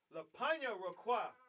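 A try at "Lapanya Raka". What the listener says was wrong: It's not Kwa, it's Ka. Just Ka. Lapanya Rakha.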